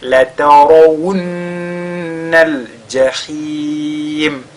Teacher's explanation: Et le nun, il est mushaddada, il est donc lu avec al-ghunna wunna, comme ça.